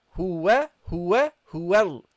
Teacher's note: Okay, so in this case, the non-voweled lam, you have to attach it, guys. You have to attach the non-voweled lam to the waw.